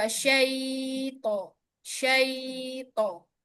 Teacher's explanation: Alirkan huruf lin panjangnya 1,5 harokat.